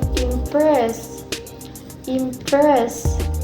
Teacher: the stress placed in the second syllable, which is press. So it's pronounced like impress, impress.